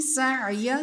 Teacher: سین کی آواز سیٹی والی باریک بالکل